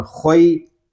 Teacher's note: خا یا زبر خوئی، خا کو پر پڑھیں گے کیونکہ خا حروف مستعلیہ میں سے ہے، اور یہاں یا لین ہو رہا ہے، یا لین اس لیے ہو رہا ہے کہ یا ساکن سے پہلے زبر آ گیا ہے۔